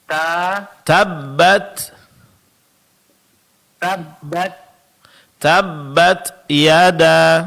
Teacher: Begitu juga pengucapan huruf ta. Tabbat sedikit berikan sifat hamas sehingga dalam pengucapannya sedikit keluar angin